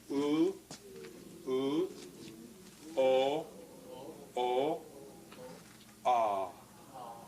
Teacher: Notice how with oo, it's up high. It's a bit lower with o, and again ah is very low.